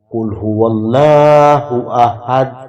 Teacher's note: جی قل هو اللہ احد میں قل جو ہے یہ قاف پر پڑھا جائے گا، لفظ اللہ کا لام بھی پر پڑھا جائے گا کیونکہ اس سے پہلے زبر ہے، اور احد ہا کی آواز جو ہے یہ گلا پچکا کے نکلے گی، اور دال حروف قلقلہ میں سے ہے، اس پر قلقلہ ادا کریں گے۔